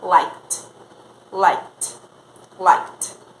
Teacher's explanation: o último som é o K, não vibra, então a gente vai falar liked, liked, liked.